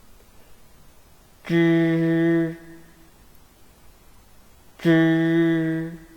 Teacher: they are pronounced by rolling up the tip of the tongue close to the hard palate